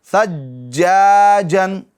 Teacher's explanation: قلقلہ کر رہے ہیں ہم جماؤں کے ساتھ, یعنی آواز مخرج میں کچھ دیر کے لیے رک جا رہی ہے